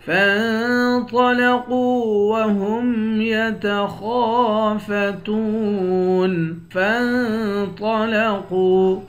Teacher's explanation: فا کو نون کے ساتھ ملا کر نون پر اخفا کریں گے، طا اور قاف دونوں کو موٹا پڑھیں گے